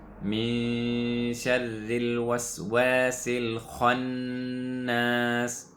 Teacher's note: The sin will connect to the lam, we'll skip the hamzatul wasl